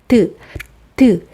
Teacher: 그 다음 드. 발음하기 위해서 한 번 막았다가 터지죠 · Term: 파열음